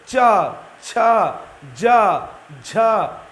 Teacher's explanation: जीभ जो है तालु को टच कर रही है। ये जिह्वा जो है ये आपके तालु को टच कर रही है। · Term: तालव्य